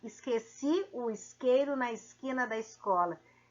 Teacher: alastrou o s com som de s h é aquele s chiado